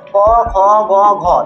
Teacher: শুধু আমাদের কন্ঠটা প্রয়োজন বলে এই ধ্বনিগুলোকে বলা হয় কি কন্ঠ ধ্বনি